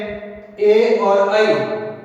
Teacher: इनका उच्चारण है कंठ और तालु से होता है, तो इन्हें हम कंठ तालव्य जो स्वर कहते हैं।